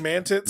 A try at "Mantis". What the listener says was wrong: Mantis? Mantis. No. You're putting a pause in there that doesn't belong there.